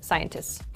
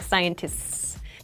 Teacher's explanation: scientists is very difficult to say in rapid speech. So, we make it like a long S sound.